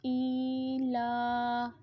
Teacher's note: حمزہ کے نیچے کھڑی زیر آ رہی ہے تو حمزہ کو بھی ایک الف کی مقدار تک لمبا کریں گے، لام کے اوپر کھڑی زبر ہے تو اس کو بھی ایک الف کی مقدار تک لمبا کریں گے۔